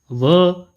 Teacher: व वर्ण जो है दंतोष्ठ्य कहलाता है। दंत और ओष्ठ के मिलने से यह इसका उच्चारण होता है, इसलिए इसको दंतोष्ठ्य बोला जाता है।